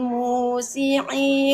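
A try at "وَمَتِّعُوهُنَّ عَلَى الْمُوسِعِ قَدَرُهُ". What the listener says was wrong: musi'i itu pendek, jangan dipanjangin.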